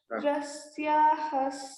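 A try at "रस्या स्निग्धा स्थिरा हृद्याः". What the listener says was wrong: నో రస్యాః. విసర్గ should not be heard.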